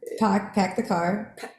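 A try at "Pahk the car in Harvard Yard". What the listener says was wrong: Pak. It's not pack, it's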